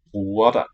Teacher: nice dark W. And the lenited G.